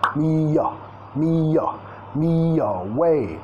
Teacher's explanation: tenemos la primera sílaba como sonido schwa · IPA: /y/